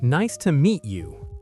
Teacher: The stress is on meet.